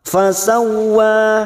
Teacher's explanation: huruf waw yang bertasdid tanpa ditekan, hanya masuk fasawwa. Fasawwa, wanya tidak boleh lebih dari dua harokat dan tidak boleh kurang, mutlak dua harokat.